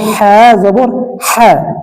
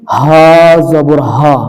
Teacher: এটার উচ্চারণ হবে হ্যাঁ জবর হ্যাঁ চাপাইয়া, আর এই হার উচ্চারণ হবে হা জবর হা, মোটা আওয়াজে।